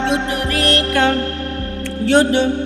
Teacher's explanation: دال ساکن ہے، اور جب ان پر جزم ہو تو ان کو پڑھتے وقت ان کے مخرج ٹکر کھا کر الگ ہو جاتے ہیں، یعنی یہاں پر قلقلہ ہوگا۔